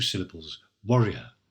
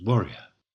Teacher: warrior is pronounced contracted with almost only 2 syllables, warrior. So everything is pronounced, but in 2 syllables, warrior.